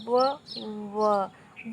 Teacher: व जब हम बोल रहे हैं तो हमारे जो ऊपर वाले दांत हैं हमारे ओठ को स्पर्श कर रहे हैं और हमारे ओठों का भी आकार कुछ परिवर्तन व। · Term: दंतोष्ठ